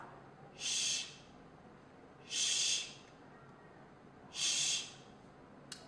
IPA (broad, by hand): ʃ